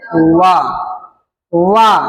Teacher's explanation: आप जब बोलेंगे वा को दंत और ओष्ठ से बोलेंगे, जैसे वा, वा दांत में जो आपकी जीभ है ना, ठेल रही है ना दांत के, और ओष्ठ सहारा ले रही है ना, इसलिए इसे क्या बोला जाता है, दंतोष्ठ।